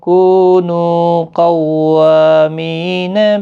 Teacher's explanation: نو واو مدہ ہے، کو واو مدہ ہے، یہاں پر نو واو مدہ ہے، تینوں کو 1 الف کی مقدار کے برابر کھینچ کر پڑھیں گے۔